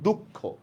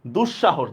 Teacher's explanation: শব্দের মাঝখানে বিসর্গ আসছে আমরা দুইবার উচ্চারণ করতেছি